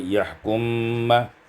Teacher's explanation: idghamkan mim pada mim maka menjadi yahkum ma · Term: idghamul mim fil mim